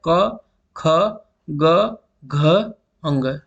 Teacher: आपकी जीभ जो है ज्यादा एक्टिव नहीं है, आप गले से इसको जो है आप उच्चारण करेंगे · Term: क वर्ग